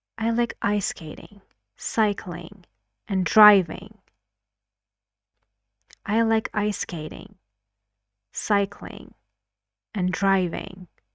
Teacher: I used all of them with falling intonation